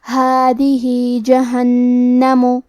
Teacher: کلمت هذه میں آخری میں حرف الہا کے نیچے کھڑی زیر ہے، یہاں حکم ہے مد صلہ صغرا، ہم اپنی آواز دو مد کے برابر لمبی کریں گے.